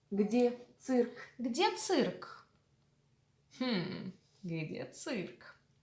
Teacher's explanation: Mind, we do not palatalize the letter ц. Never. It's always, after it, there is almost always the letter E, but it's pronounced as U, цирк.